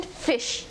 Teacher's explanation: The ninth consonant is the sound, as in fish. It is described as a voiceless labiodental fricative consonant.